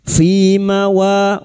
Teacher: wa fathah bertemu alif dua harakat kita panjangkan mad thabi'i